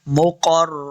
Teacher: इन कान मिनल मुक़र्रबीन, मुक़र्र, ये जो दो नुक्तों वाला काफ है, इसको मोटा पढ़ना है। मुक़र्र, रॉ को भी पुर पढ़ेंगे, काफ को रा के साथ मिलाना है।